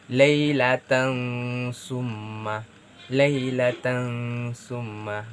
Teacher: Toms Ummah Laila tengsu mah Mengapa disitu saya menyebutkan laylatan atau lebih mengarah kepada ng karena disitu ada terdapat kasrohtain yang bertemu dengan huruf tsa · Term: ikhfa